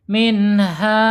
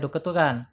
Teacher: Kemudian secara makhraj yaitu al-jaub ya, tetap mengalirnya dari tenggorokan sampai mulut sampai keluar gitu. Tidak boleh masuk ke hidung atau al-khaisum. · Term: mad tabi'i